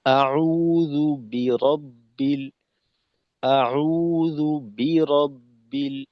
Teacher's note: জালের উচ্চারণ এবং বা এর উচ্চারণ এই দুইটাকে জালকে আর বাকে একটু আলাদা ধাক্কার মাধ্যমে পৃথক করে নেওয়া